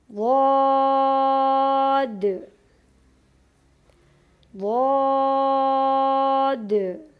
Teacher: حافہ لسان سے ادا ہونے والے اس حرف کو حرف حافیہ کہتے ہیں